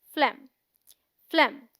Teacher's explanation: PHLEGM is one syllable and sounds like phlegm, which rhymes with hem, short E sound. We say phlegm, not flame.